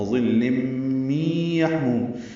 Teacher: تنوین کے بعد میم آنے کی وجہ سے لم ادغام ناقص ہے، غنہ ہوگا